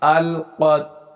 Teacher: تا کو ہلنے نہیں دیا گیا، کیوں؟ اس لیے کہ یہ حروف قلقلہ میں سے نہیں ہے، لام بھی نہیں ہلے گا، تا بھی نہیں۔